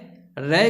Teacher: अर्थात इसका उच्चारण स्थान की बात की जाए तो दंत मूल या मसूड़ा इसका उच्चारण स्थान है। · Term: वत्सर्य वर्ग